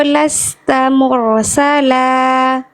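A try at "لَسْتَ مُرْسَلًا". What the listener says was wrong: Cuman hati-hati di huruf ro sukun. Memang huruf ro itu getarannya tidak boleh berlebihan. Tapi jangan sampai juga getarannya jadi samar. Contoh, mursalah. Nah, itu getaran yang tadi dibaca kurang jelas, kurang mantep, kurang tegas. Jadi jelaskan lagi. Mursalah, mur. Nah, jangan sampai cuman mur. Lasta mursala gitu. Tebalkan bagus tapi jangan sampai menyamarkan getaran huruf ro-nya.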